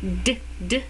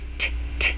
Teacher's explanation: D is the kind of the voiced version of T.